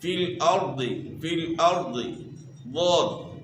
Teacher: زبان کی کروٹ یعنی زبان کی کروٹ کا جو موٹا حصہ ہے اس کو آپ نے اوپر کی داڑھوں کی جڑ کے ساتھ لگانا ہے